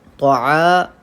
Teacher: طعا، عین الف زبر آ پہ قاعدہ ہے الف مدہ کا. 1 الف کے برابر الف مدہ کو کھینچ کے پڑھنا چاہیے